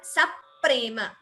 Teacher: there is an extra p heard, stress before pa. Saprema bhiti, bha is mahaprana. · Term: dvitvam